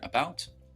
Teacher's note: in the word about uh the a isolated there sounds like a schwa